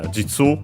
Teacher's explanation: it's simply Jitsu, accented on the last syllable.